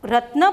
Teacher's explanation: રત્ન બોલો એટલે નની પાછળ અસ્વરનો ઉચ્ચાર થાય છે, માટે તેને અકારાંત કહેવામાં આવે છે.